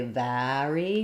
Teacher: In some dialects, like New York dialect, some other dialects of English, they would say vary, more of an ah sound on this one, ar. But standard across most of the US, you can just say air for both of these.